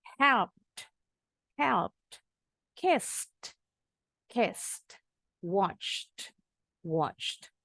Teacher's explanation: bunyi C semua disebutnya voiceless consonant sound karena kita suaranya enggak bergetar ed-nya bunyinya t